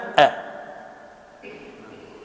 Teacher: مخرج الحركة الذي هو الألف أي اهتزاز الوترين الصوتيين مع انفتاح الفم